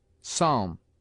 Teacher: P is sometimes mute, as in psalm